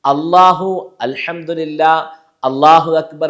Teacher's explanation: ആ എന്നുള്ളതെല്ലാം ഹൽക്കിന്റെ ഏറ്റവും അടിഭാഗത്ത് ഉച്ചരിക്കപ്പെടേണ്ട അക്ഷരമാണ്